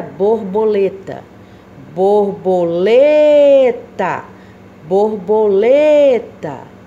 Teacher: a sílaba tônica da palavra borboleta está na penúltima posição